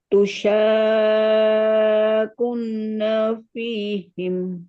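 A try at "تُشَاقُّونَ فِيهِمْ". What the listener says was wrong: Nah, kun nggak boleh kunna. Ku-nya kan domah bertemu waw sukun. Berarti berapa harokat?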